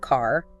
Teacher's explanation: Americans typically pronounce the R sound at the end of words like car. Uh-huh. while lots of British accents just don't.